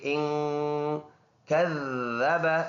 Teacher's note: ذال جماؤں کے ساتھ نرم ادا کریں گے